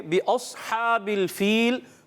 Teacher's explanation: صاد کو ہم نے پر کرنا ہے یعنی موٹا کرنا